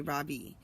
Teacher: In America, people call me Ravi with the stress on the first syllable.